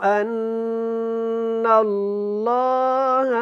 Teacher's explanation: اور اللہ والا لام ہے، اس سے پہلے زبر ہے، تو اس کو ہم نے کیا کرنا ہے؟ موٹا پڑھنا ہے